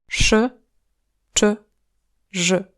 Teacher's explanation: Le bout de la langue est un poil plus relevé que pour che et je en français.